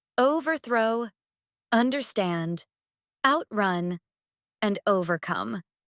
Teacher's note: For compound verbs, the stress typically falls on the second part of the word. Examples include overthrow, understand, outrun, and overcome, where the stress is on throw, stand, run, and come.